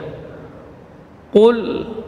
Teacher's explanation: huruf qaf, huruf syiddah dan jahar. Keluar dari pangkal lidah menempel pada langit-langit yang lunak. · Ketika sukun maka tetap dia mengalir sebagian dari suara. Sementara di sini huruf lam tidak boleh tebal karena pengaruh qaf.